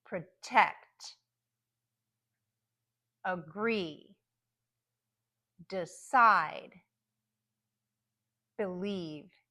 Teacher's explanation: So the first syllable will be unstressed, so it's going to be reduced to the schwa sound.